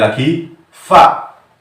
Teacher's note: mahroj yang bertempat di tengah-tengah bibir dan dua ujung gigi depan bagian atas, yaitu ada mahrojnya huruf fa